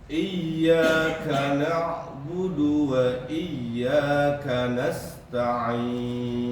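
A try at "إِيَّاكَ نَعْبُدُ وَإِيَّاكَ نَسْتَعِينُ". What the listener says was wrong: K-nya jangan terlalu desisnya, biasa aja. K, bukan K. K, K, enggak, kecilkan lagi. K, sedikit saja. K, seperti biasa. K.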